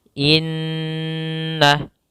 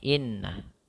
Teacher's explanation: Gunnah itu dengungan atau menahan. Maka kita tahan dahulu suara n-nya sepanjang 2 harokat. Maka cara membacanya inna, tidak boleh inna.